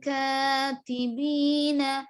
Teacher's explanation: اخفا جیسے سمجھ رہے, نون کی آواز بالکل بھی نہیں آ رہی اس میں. کاتبین, اس طرح.